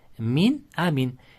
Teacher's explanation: Sukunlik nun harfidan so'ng hamza kelsa ham bu ham bildirib o'qiladi. Ya'niki min amin deb o'qiladi. · Ya'niki min deb qandaydir g'unnalarab bermaymiz. Oddiygina o'qiymiz.